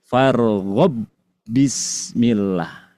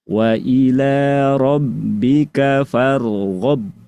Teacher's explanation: Jadi seolah-olah ba yang pertama menghilang. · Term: hukum idgham